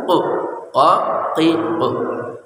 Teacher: ada q ya dari pangkal lidah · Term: qaf